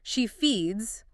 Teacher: she feeds with the buzzing Z sound